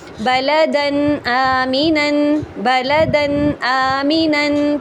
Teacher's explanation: ہم اس میں غنّہ تو نہیں کریں گے لیکن نون کو پورا ظاہر کر کے پڑھیں گے